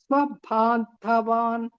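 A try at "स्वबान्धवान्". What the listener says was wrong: Ba is not ma prana. Swabandhavan. Da only ma prana.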